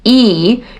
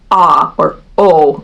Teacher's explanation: e if you say e you'll notice you have to move your tongue up you kind of have to squeeze it and move it forward as opposed to saying ah or o where your tongue drops low in your mouth